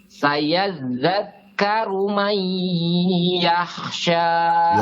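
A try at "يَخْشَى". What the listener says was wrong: Yakhsha. Tebalkan kha-nya. Yakhsha.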